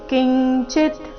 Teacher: ಅನುಸ್ವಾರದ ಉಚ್ಚಾರಣೆ ಇಲ್ಲಿ ಚ ವರ್ಗದ ಅನುನಾಸಿಕದ ರೀತಿ